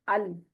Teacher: को लाम पर कलक कर देते हैं तो यह नहीं करना लाम साकन जो है उसको पकड़ के रखना छोड़ना नहीं